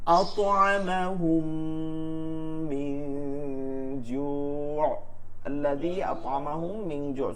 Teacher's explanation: ইদগামে শাফাওয়ির হরফ একটি মিম, মিম সাকিনের বামে মিম আসলে ওই মিম পরবর্তী মিমকে তাসদীদ দিয়ে মিলাইয়া পড়তে হয়, গুন্নার সহিত মিলাইয়া